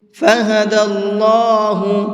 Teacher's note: اللہ کے لام کو منہ بھر کے پڑھیں گے، اس لیے کہ اللہ کے لام سے پہلے زبر ہے، اور اللہ کے لام سے پہلے زبر ہوتا ہے تو اس اللہ کے لام کو منہ بھر کے پڑھتے ہیں۔